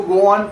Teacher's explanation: If the first word ends in a sound like O or sounds speakers tend to insert a very light W glide